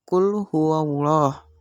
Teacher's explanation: Maka kita membaca Allahnya itu dibaca dengan tebal. Hukum bacaannya itu adalah tafhim. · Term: tafkhim